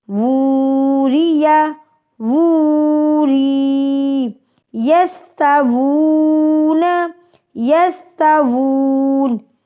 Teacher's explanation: ہم نے الٹا پیش کو ایک الف کے برابر کھینچ کے پڑھنا ہے